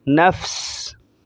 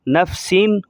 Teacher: اینڈ میں 2 زیریں ظاہر نہیں کرنی جب ہم رکیں گے، دونوں زیر سین کے نیچے ہیں تو وہ ظاہر نہیں کرنی۔